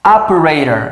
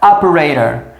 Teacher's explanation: a tônica está no início e aí esse T que está entre vogais no final, ele passa a ter um som de R